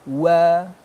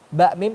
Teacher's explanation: waw ini bibir mencucu, ba, mim hanya mingkem saja. Bertemu antara dua bibir.